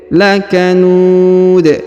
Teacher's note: Huruf nu dipanjangkan, boleh 2, boleh 4, boleh 6 ya. Karena di depan huruf nu terdapat waw sukun sebelum huruf pemberhentian.